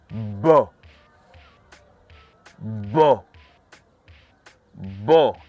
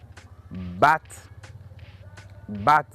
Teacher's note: Effectivement, j'ai senti des vibrations au niveau de ma corde vocale. Donc, nous pouvons dire sans se tromper que la lettre B émet un son voisé.